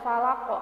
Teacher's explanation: harus pantul dipantulkan dengan kuat karena Q ini termasuk salah satu huruf Qalqalah